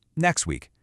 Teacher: The T sound tends to disappear when it gets stuck right in the middle of two other consonant sounds. It's like it's being squished out of the word.